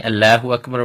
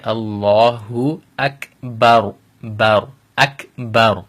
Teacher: If you remember the rule of the lam, the alif here has fatha, so we're going to make the lam in the word Allah lafzul jalala, we're going to make that heavy or tafkhim